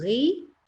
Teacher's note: Karena kalau kita bacanya ri langsung ri, dia jadi tipis ya. Tapi kalau kita tebalkan dulu ri, jadi ada karakter tebalnya dulu, ri, dia menjadi tebal.